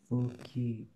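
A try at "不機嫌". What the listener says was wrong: There is a fuki, but then it's gen. Fukigen.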